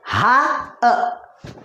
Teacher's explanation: हमजा हा दोनों शुरू हलक से यानी सीने के करीब से अदा होते हैं।